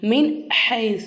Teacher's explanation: சுக்குன் செய்யப்பட்ட இந்த நூனை வெளிப்படுத்தி உச்சரிக்கணும். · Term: இல்ஹாருடைய